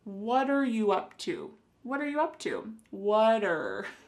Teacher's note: the word what and are creating a spoken contraction